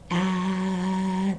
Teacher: You'll say, can you feel that when you pronounce ah in your throat, there's a trembling feeling, a vibrating feeling